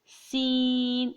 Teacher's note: سین کی آواز سیٹی کی طرح ہوتی ہے، سین۔ دونوں دانتوں کو سختی سے ملائیں گے اور اس کے بعد پھر اس کی آواز نکلے گی سین۔